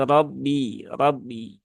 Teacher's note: Bukan RAB tapi Rabbi rabbika dan yang perlu diperhatikan di sini huruf ba Dia ee sifatnya bukan Hames ya maka Ya seharusnya tidak diikuti dengan aliran nafas